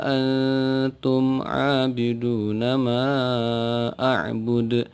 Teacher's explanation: Nun berharakat sukun bertemu dengan huruf ta salah satu huruf ikhfa dibaca samar